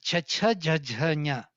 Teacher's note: cha cha ja ja nya palatal. The middle of the tongue.